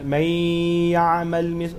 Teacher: dia ghunnah ni dia dengung sikit kan kat hidung